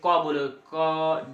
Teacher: क देरी तक अगर उच्चारित करेंगे तो क के बाद अ स्टार्ट होता है